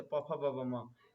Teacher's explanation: प वर्ग का उच्चारण ओष्ठ से होता है, तो इसीलिए ब का उच्चारण ओष्ठ से होगा।